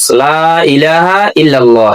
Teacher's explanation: লা এটা 3 আলিফ টানা, এটা টানতে হবে কমপক্ষে 1 আলিফ টানা ফরজ